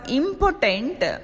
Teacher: the first syllable is said with more force than the other two syllables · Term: stressed syllables